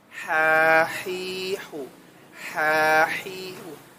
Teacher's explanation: ini sangat sangat mirip dengan suara nafas sehingga ha kecil ini cenderung suka hilang